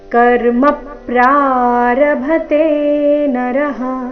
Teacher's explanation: ಎರಡನೇ ಚರಣದಲ್ಲಿ ಒಂದೇ ಆಘಾತ, ಕರ್ಮದಲ್ಲಿನ ಮ ಮೇಲೆ ಪದ್ವಾಘಾತ